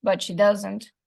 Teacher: The fourth IP, but she doesn't, completes the idea and makes the contrast explicit. The nuclear stress is on the word doesn't because, as I said, there is a contrast of polarity between the person who does like biscuits and the one who doesn't. · The tone is falling because that way the speaker signals that the idea is complete.